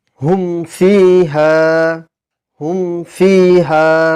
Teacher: মিম ছাড়া অন্য কোন হরফ আসে তবে ইজহারে শাফাফি হবে অর্থাৎ মিম সাকিন কে প্রকাশ্যে পড়তে হবে এখানে কোন রকমের গুন্নাহ করা চলবে না